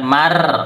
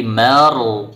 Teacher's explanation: huruf ro sukun sebelumnya fathah dibaca tebal